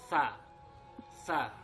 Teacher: Nah, untuk mengucapkan huruf sa ini kamu harus perhatikan tempat keluar hurufnya, yaitu dari ujung lidah dengan ujung gigi seri bagian atas